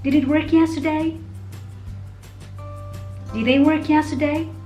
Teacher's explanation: Since these are yes/no questions, we commonly use the rising intonation.